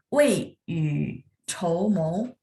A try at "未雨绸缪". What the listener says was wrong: Ya, yang comonya benar ya. Y-nya tadi nada 3. Itu saja.